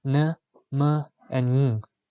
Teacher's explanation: Nasal. Nasal stops are sounds produced with the velum lowered and with air escaping through the nasal cavity alone.